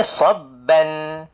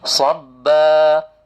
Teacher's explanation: Bila berhenti baru nampak bentuk dia mad asli 2 harakat.